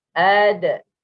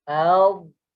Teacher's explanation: Pangkal lidah kita ni tak terangkat. Huruf dot, pangkal lidah terangkat. And then juga lidah melekat ke langit. Bila dia terangkat, dia melekat ke langit.